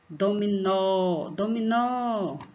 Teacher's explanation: Então, você vai ver que o nó, você exige mais força na garganta para falar o nó. Então, nó é a sílaba tônica.